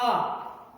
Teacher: आ कहने के लिए हमें पूरा मुख खोलना पड़ता है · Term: द्विवृत्त